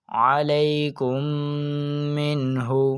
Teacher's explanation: نون ساکن کے بعد حرف ہا موجود ہے جو کہ حروف حلقی میں سے ہے، تو اس نون ساکن میں اظہار کا قاعدہ لگنے کی وجہ سے ہم اس نون ساکن میں گننا نہیں کریں گے